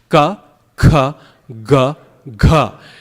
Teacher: Kantha means neck. They're pronounced as far back as your tongue can possibly go. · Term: gutturals